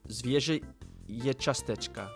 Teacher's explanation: that E with the little tail at the end is not pronounced nasally